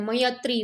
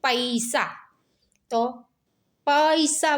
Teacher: અ સ્વર પછી જો ઈ સ્વર આવે તો ઈ ના બદલે આપણે ય બોલીએ